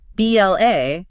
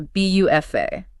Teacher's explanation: instead of anchoring the end of the word with a hard stop, it just floats away into an A sound.